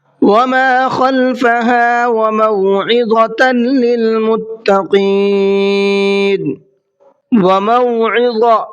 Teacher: عین کو حلق سے نکالنا ہے اور وا کو منہ بھر کے پڑھنا ہے